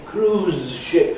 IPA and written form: ˋkruːzʃɪp (cruise-ship)